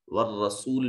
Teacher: والرسول میں را مشدد بھی ہے، متحرک بھی ہے اور مفتوح بھی ہے، اس لیے اس کو مفخم ادا کریں گے